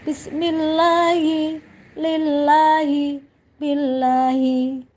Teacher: ketika ada lafal jalalah kok didahului dengan kalimat dengan harokat kasroh, maka lafal jalalah itu dibaca dengan tarkik atau tipis.